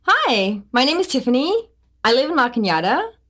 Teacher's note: A certain segment of the population uses rising staircases